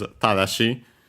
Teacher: The accent is on the ta, on the first mora.